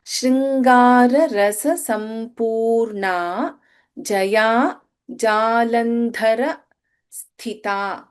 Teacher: In Jalandhara, Dha is Mahaprana. In Sthita, Tha is Mahaprana. In Sthi, the last letter Ta is Alpapranakshara.